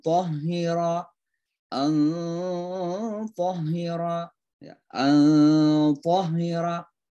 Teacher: seolah-olah suara nun itu masuk sebagian ke dalam ta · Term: ikhfa